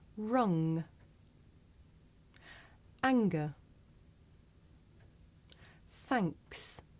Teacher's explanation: we make this sound towards the back of the mouth mmm and if you do this sound correctly you can feel